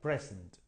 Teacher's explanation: Present, ¿ok? O sea, the stress is on the first syllable